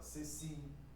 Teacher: Então a última sílaba é a mais forte, é oxítona.